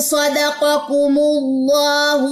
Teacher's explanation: اللہ کے نام سے پہلے پیش تھی تو ہم نے اس والے لام کو موٹا پڑھا ہے